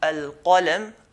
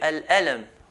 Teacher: They change the qaf into an alif.